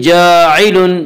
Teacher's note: انی جاعل، جاعل الف مدہ، الف ہمیشہ مدہ ہوتا ہے اور الف سے پہلے زبر ہوتا ہے، الف مدہ کو 1 الف کے برابر کھینچ کر پڑھیں گے